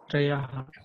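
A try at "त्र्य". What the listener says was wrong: Not Treyaha. In English, when you write, how do you write this? T R Y A. Not T R E A Y A. That is Treya.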